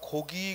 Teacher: 그런데 모음과 모음 사이에 있는 기는 이게 유성음이거든. 그러니까 똑같은 기역이 첫 소리에서는 무성음으로 나고 모음과 모음 사이에서는 유성음으로 나요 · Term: 변이음